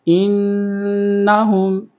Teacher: آگے نون کے اوپر تشدید ہے تو یہاں پر غنہ بھی کریں گے اور حمزہ کو نون کے ساتھ ملائیں گے.